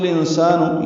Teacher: انسان میں اخفا ہے، نون ساکن کے بعد سین آنے کی وجہ سے